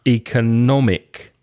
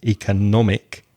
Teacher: So the third syllable is strong. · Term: stress